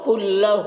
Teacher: کلہ ہو میں الٹا پیش ہے، کھینچیں گے